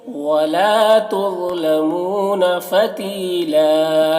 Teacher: میں واو مدہ ہے، فتیلا یہاں پر یا مدہ ہے اور یہاں پر وقف کریں گے تو ایک زبر کے ساتھ الف پڑھیں گے